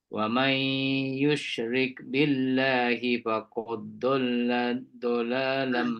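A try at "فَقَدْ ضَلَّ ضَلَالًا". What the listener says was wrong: Matikan dulu dal tu. Faqad dhalla.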